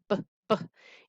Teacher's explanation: In this sound, your lips are cutting off the airflow for that sound. That is what makes it a consonant sound. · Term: b sound